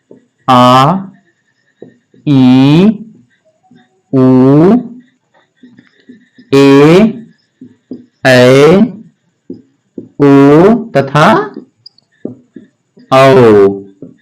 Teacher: लेकिन दीर्घ स्वर क्या होते हैं, ये ह्रस्व स्वर से दुगना समय लगता है इनके उच्चारण में